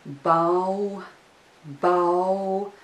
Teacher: there is a diphthong ow in this syllable